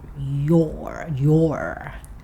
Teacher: we don't tend to make a strong R sound with 'you're' like the Americans do. "You're". And if it's said quickly, like he says it here, it becomes more like 'yə' with the schwa sound.